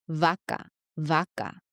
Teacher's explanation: pronounced by having your bottom lip touch the top row of your teeth.